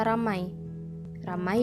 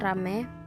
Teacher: perubahan ini terjadi pada bunyi vokal rangkap ai ke vokal tunggal